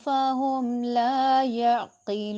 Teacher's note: جب وقف کریں گے نون متحرک ہے وہ ساکن ہو جائے گا اور مد عارض وقفی ہوگا، یعنی اس کو بھی لمبا کریں گے